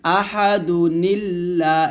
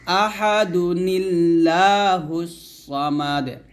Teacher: আহাদু বলতে হবে দাল পেশ দুই এক পেশ উচ্চারণ করতে হবে তারপর নুনকে লাম খেতে হবে নিল্লা বলতে হবে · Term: নুনে কুতনি